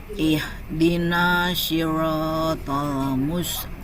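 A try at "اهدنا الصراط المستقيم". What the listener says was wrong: Nah, maaf di sini haknya tadi berubah menjadi ha. Kemudian sodnya tadi berubah menjadi shin. Sod bunyinya nggak boleh ihdina shi. Tidak boleh bunyi shi. Harus bunyi soi. Soi. Itu campuran dengan sod. Nah, ini posisinya bibirnya diam saja.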